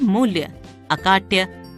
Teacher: अब मूल्य, अकाट्य, इन शब्दों का उच्चारण करके देखिए। इनमें संयुक्त अक्षर से पहले वाले अक्षर म तथा का पर जोर दिया गया है। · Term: बलाघात